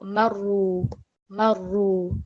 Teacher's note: So that ra, again, because it's carrying a dhamma stroke, it's going to be read in a thick and broad manner